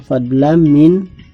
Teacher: Jadi mendengung, ada fatatain bertemu dengan huruf mim. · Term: idgham bi gunnah